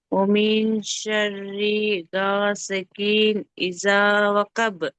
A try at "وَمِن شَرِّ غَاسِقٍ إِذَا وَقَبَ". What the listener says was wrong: గాసికిన్ నూన్ శబ్దం క్లియర్గా రావాలి. గాసికిన్ ఇదా వకబ్.